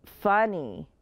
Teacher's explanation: you hear the short u and that y at the end makes the long e sound so that's two vowel sounds